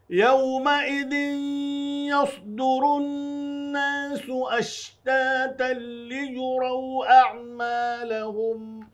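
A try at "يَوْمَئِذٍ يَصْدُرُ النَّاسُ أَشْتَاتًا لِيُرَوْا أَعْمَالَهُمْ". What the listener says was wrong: يصدر، آپ دونوں نے سین پڑھا ہے اس کو، ناظرین دھیان دیں گے، سواد پر ہے، یس پر نہیں کریں گے تو سین ہو جائے گا اور بہت بڑی غلطی ہوگی.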